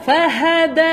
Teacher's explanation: Lembut dal. Makhraj untuk huruf dal, hujung lidah belakang gigi atas.